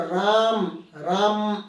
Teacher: जैसे हमने लिख दिया, मान लीजिए हमने यहाँ लिख दिया राम, राम, तो इस म में अ है ना, तो मैं जोर से बोलूँगा राम, राम, म को खींच के बोलेंगे तो वो हो जाएगा प्लुत। जैसे अंतिम में जो स्वर आता है उसी का प्लुत बन जाता है।